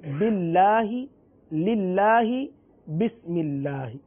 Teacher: اللہ عز و جل کے لام سے پہلے اگر حرف کے نیچے زیر آ جائے تو یقیناً اللہ عز و جل کے لام کو باریک پڑھیں گے، باللہ، للہ، بسم اللہ.